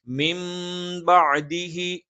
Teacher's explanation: നൂനിനെ നമ്മൾ മീമാക്കിയിട്ട് മറിച്ച് മണിക്കും. അപ്പൊ നൂനിനെ മീമാക്കുന്നത് കൊണ്ടാണ് അവിടെ ഒരു മീം ഇട്ട് കൊടുത്തിരിക്കുന്നത്. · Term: ഇഖ്ലാബാണ്